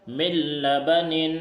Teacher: من لبن، دیکھیے اس میں بھی ادغام تام ہوگا کیونکہ نون ساکن کے بعد حروف ادغام میں سے لام آیا ہے، تو اس نون کو لام سے بدل دیں گے اور بغیر غنہ کے پڑھیں گے، جیسے میم لام زیر مل، اس طرح پڑھیں گے.